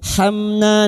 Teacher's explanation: Warham, warham. Hamna, mim sukun bertemu nun idhar syafawi. Mim sukun dibaca jelas tanpa mendengung